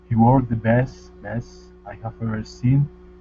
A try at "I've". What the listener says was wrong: Now, when we have a word such as I've, try to pronounce it as written, right, rather than making it into I have, simply because it's more natural sounding. Because in English, when we have these words, we do pronounce them as I've.